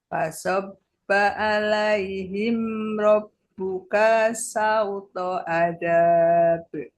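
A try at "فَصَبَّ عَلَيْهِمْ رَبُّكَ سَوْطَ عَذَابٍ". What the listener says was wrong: Rob buka, kanya pendek.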